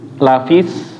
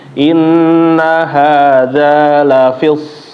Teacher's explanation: So-nya ditebelin lagi ya. Ditebelin lagi isti'ala, jangan sampai bacanya kayak huruf sin.